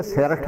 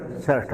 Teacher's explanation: ਠੱਠੇ ਨੂੰ ਸਿਹਾਰੀ ਲੱਗੀ ਉਹ ਬੋਲਦੇ ਨਹੀਂ ਹੈ।